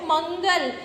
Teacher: अनुस्वार का हम प्रयोग करते हैं तो मंगल नाक से बोलेंगे